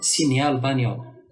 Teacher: le groupe GN note le N mouillé, il se prononce NI, comme signal, bagnole. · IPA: [ɲ]